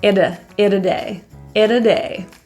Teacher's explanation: Let's just call it a day. The T in it, because it's surrounded by vowels, is pronounced as like a quick little D. It's a flap T.